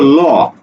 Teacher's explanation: ল যখন উচ্চারণ করি তখন আমাদের জিহ্বাটা চ্যাপ্টা হয়ে যায়, চিকন হয়ে যায়, এবং বাতাস জিহ্বার দুই পাশ দিয়ে বেরিয়ে আসে, এই জন্য এটাকে বলা হয় পার্শ্বিক ধ্বনি, বা পার্শ্বিক ধ্বনি বলে, পাশাপাশি একে তরল বর্ণ বলে।